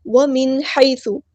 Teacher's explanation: نون ساکن کے بعد کو ہم یہاں پہ ظاہر کریں گے، یہاں پہ اظہار ہو رہا ہے، اظہار حقیقی